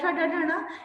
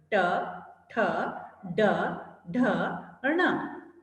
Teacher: इसमें जीभ जो है मूर्धा से यानी तालु से थोड़ा सा ऊपर से टकराती है